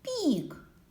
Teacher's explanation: перший звук у слові пік звук пі він М'який приголосний пік звук і голосний і останній звук пік звук к твердий